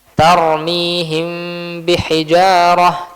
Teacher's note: Maka hukumnya ikhfa. Harus kita ikhfakan. Kita sembunyikan si huruf mimnya. · H him. Mimnya dijelaskan bukan, tapi diikhfakan disembunyikan.